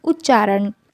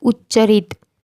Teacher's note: त के बाद यदि च छ हो तो त का च हो जाता है